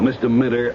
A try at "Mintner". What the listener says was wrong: No, with an N. Mintner, not Minter.